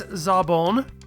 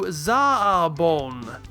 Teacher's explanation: here we're taking a short vowel sound and lengthening it